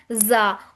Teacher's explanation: زا جو کہ سیٹی کی طرح آواز ساؤنڈ آئے گی اس کی